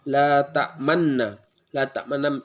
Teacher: Isamah itu ialah seperti membaca nun lalu kita memonyongkan mulut kita ke depan seolah-olah kita membaca awalnya fathah menjadi dhammah, seperti la ta'man, seperti seolah-olah kita membaca mannu, namun aslinya la ta'mannu, la ta'manna.